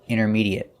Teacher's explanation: the a at the end is pronounced it there's no eight sound it's short it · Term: short et